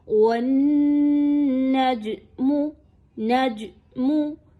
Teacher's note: یاد رکھیے اس کو مخرج سے اچھے طریقے سے نکالیے، یعنی زبان کا جو سینٹرل پارٹ ہے، زبان کا جو وسط ہے وہ اوپر کی جانب اٹھے گا تو جیم جو ہے وہ اچھے سے نکلے گا